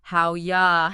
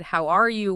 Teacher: In rapid speech, the R sound often gets weakened or just blends away, and the vowel in R flattens completely. · When we speak quickly, how are you just collapses and often becomes how you or even more commonly the super reduced howya?